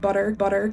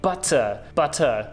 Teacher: says butter with a d sound instead of a t sound